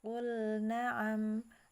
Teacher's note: Ya, maka di situ jangan dibaca qul na'am, jangan diidgham, ya, tapi dia lamnya jelas